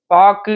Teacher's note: இறுதியில் வரும்போது, ஒரு மாத்திரைக்கு பதிலாக அரை மாத்திரை அளவே ஒலிக்கும். பாக்கு இதுல கூட உ சவுண்ட் அதிகமா இருக்கும். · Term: குற்றியல் உகரம்